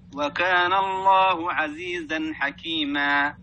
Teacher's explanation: ينقطع الصوت مع الألف ولا يمتد فيصبح هاء وهذه كثيرة عند القراء حكيمة ما هكذا نعم وكان الله عزيزا حكيما أيوة.